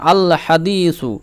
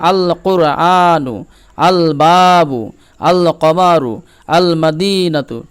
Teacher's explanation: হুরুফে কমারির ক্ষেত্রে লামের উচ্চারণ পূর্ণভাবে হয়ে থাকে